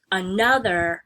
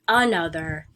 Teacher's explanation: So when you normally say another, you're trying to figure out which of those syllables, the first one or the second one, gets the emphasis when you say it. Normally, you say the word another with stress on the second syllable.